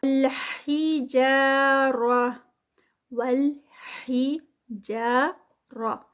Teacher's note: جا پہ 2 کاؤنٹس کیونکہ یہاں پر الف مد ہے